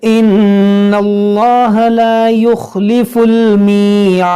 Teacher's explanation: اس میں جلال سے پہلے زبر ہے تو اس کو موٹا کریں گے، یہاں نون مشدد اس میں غنہ کریں گے.